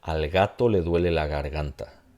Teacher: Una vez que no es la posición inicial, este sonido, lo que termina pasando es que se convierte en una fricativa.